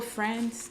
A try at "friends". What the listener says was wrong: It sounds like you're saying friend. Friends. It's friends. Friends. I was just saying you sound like you're saying friends.